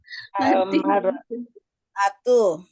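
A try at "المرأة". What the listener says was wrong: Al-mar'ah gitu ya. Atu-atunya nanti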